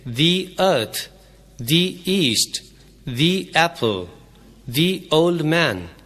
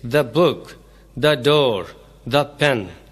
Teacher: اسے اس وقت دی بولتے ہیں جب اس کے بعد والا لفظ وال ساؤنڈ سے شروع ہو